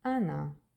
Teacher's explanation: Why is O became A? Because it's not stressed. The accent is on A. The O became A.